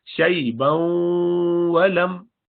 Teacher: تنوین کے بعد واو ہے، ادغام ما غنہ کریں گے